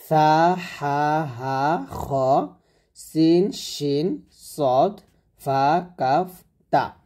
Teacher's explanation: দশটা হরফ হামস হবে মানে বাতাস বের হবে